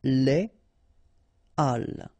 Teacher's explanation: you won't have the possibility to make the liaison between your article and your word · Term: H aspiré